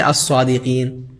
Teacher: لام کا ڈراپ کر دیے، ڈائریکٹ حرف سے ملا رہے ہیں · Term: حروف شمسی